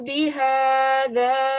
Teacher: Sort of giving a slight nasal 2-second ikhfa sound